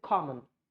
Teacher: this sound will convert into schwa. So that's why we say common. We do not make this sound, O sound. No, we just forget about it. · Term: schwa sound